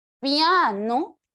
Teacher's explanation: la vocal abierta recibirá el nombre de núcleo pero la y que tiene menor fuerza de voz se le llama vocal marginal